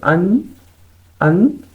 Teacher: آپ کی زبان کی نوک جا کے اوپر والے دانتوں کے جڑ کے ساتھ لگ رہی ہے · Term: نون